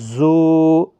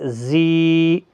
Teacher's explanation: صفیریہ کا زا سختی کے ساتھ، زا یا زیر زی۔